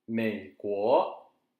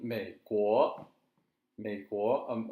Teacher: once again, low, third tone is low